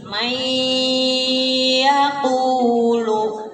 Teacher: yang tadi idghamnya itu nun mati masuk ke iya. Kemudian biguna dengan didengungkan ya. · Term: Idgham bi guna